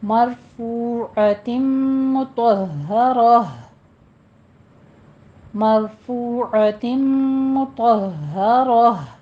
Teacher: مرفوعۃ مطہرہ، مرفوعۃ مطہرہ، یہاں پہ را پر پڑھی جائے گی، فو میں واو مدہ ہے، دونوں ہونٹوں کو گول کیجیے، عین وسط حلق سے ادا کریں گے